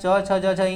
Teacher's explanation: तालु से उच्चारण स्थान होता है च छ ज झ इयां, यानी कि चौवर का उच्चारण स्थान डायरेक्ट होते हैं तालु से।